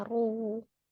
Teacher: Ru dibaca Dua harakat dimajukan kedua bibirnya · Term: Mad Thobi'i